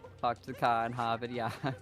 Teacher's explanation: I drop the Rs in my words.